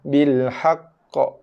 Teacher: Seolah-olah kita melambatkan bunyi lantunan. Kita lambatkan sikit. Kita delay bunyi qalqalahnya.